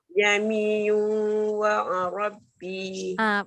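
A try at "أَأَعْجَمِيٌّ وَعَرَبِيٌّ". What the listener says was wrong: Bukan dekat ba. Dekat ya. Jamiyun wa Arabi. Bukan dekat ba. Dekat ya. Sabdu dia dekat ya. Wa Arabi.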